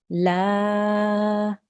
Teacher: You elongate the fatha sound for 2 seconds. In this example, we would say la, 2 seconds. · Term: alif mad